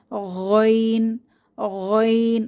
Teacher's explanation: শিখেছিলাম আইনের উপর যখন এক নুক্তা দিব তখন হয়ে যায় গাইন কণ্ঠনালীর শেষ ভাগ থেকে আওয়াজকে পেঁচিয়ে গাইন উচ্চারিত হয়